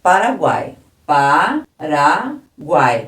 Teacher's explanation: três sons vocálicos seguidos uma vogal entre duas semivogais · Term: tritongo